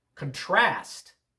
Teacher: Contrast with the accent on the second syllable, that's the verb.